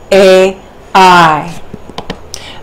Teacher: you really feel the grand sweep of sound from the guttural part of the mouth, where the ah shifts into the I-E sound at the palate